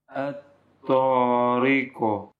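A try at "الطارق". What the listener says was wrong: Ya, yang harus kita hati-hati jangan sampai seperti fathah.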